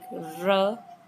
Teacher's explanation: Then trill and frap sounds. Tongue tips tap or vibrate against the surface rapidly like r